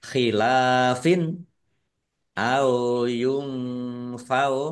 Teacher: Nun sukun bertemu dengan huruf fa. Bacaan ikhfa dibaca samar-samar.